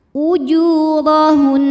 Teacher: Dho dibunyikan secara tafkhim karena berbaris di atas maka dibaca tebal · Ra dibunyikan secara tafkhim karena berbaris di atas, maka dibaca tebal. Ujurahun. Apabila kita berhenti di sini, nunnya tetap dihukumi gunnah musyaddadah karena nun bertasydid, maka tasydidnya dengungnya tidak hilang, tetap dibaca ditahan.